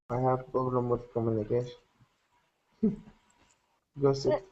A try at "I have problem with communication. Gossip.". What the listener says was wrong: what I want you to start doing is open your mouth a little more, because sometimes I can tell that your mouth is talking like this, and then we cannot tell what you are saying.